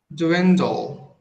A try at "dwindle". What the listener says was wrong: Eu acho que ainda estou escutando um sonzinho de vogal entre o da e o la. Mais uma vez.